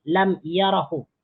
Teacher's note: Setelah dimasuki oleh lam nafi, lam huruf jazm ni, maka alifnya dihilangkan menjadi lam yara. Dia dibaca pendek.